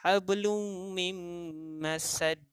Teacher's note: Dia dengung, kita dengar bunyi hablum mim. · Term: idgham ma'al gunnah